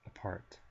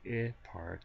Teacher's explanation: right in the middle is a vowel that we call the schah and it's the upside down e